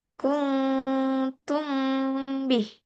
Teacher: dengan merapatkan dua bibir, bibir atas dan bawah sebelah dalam dan diikuti dengan suara berdengung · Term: ikfa syafawi